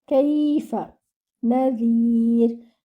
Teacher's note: Noon is given 1 count. Zal should be from its makhraj, which is the tip of the tongue touching the edges of the front teeth. And your ra at the end should be light.